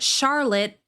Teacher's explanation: The vowel in the second syllable is reduced to schwa with a stopped T at the end because the final E is silent. We don't pronounce that.